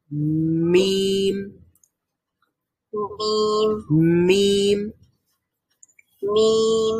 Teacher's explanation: দুইটা ঠোঁট যখন আমরা বন্ধ রেখে একটু বন্ধ রেখে তারপরে খুলে ফেলবো এবং সাউন্ড বের হবে নাক দিয়ে, তখন মিম উচ্চারিত হবে।